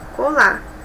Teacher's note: algumas palavras são escritas com R no final como colar mas a fala esse R tende a não ser pronunciado